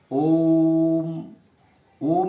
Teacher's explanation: ओ को दीर्घ से भी अधिक देर तक यानी तीन मात्रा काल तक उच्चारण उसका करना चाहिए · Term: प्लुत स्वर